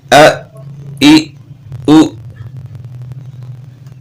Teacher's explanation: حمزہ جو ہے جھٹکے والا ہوتا ہے